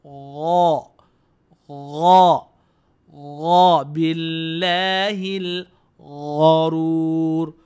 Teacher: Ghin ni berada di pangkal kerongkong. Sebab tu ghin ni tidak dihiasi dengan bunyi.